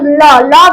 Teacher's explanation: ল বললে দেখবে দাঁতের একটা সাহায্য লাগছে তাই এটা দন্ত